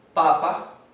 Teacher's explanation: El acento está en la primera palabra, en la primera sílaba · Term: acento primario